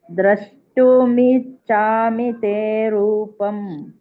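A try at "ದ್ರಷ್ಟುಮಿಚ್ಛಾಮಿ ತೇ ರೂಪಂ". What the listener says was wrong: ಚಕ್ಕೆ ದೊಡ್ಡ ಚ ಬತ್ತಿದೆಲ್ಲ ಹಾಗಾಗಿ ಒತ್ತಿ ಹೇಳಬೇಕು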